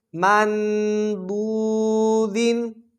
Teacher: ضاد حروف مستعلیہ میں سے ہے، موٹا پڑھا جائے گا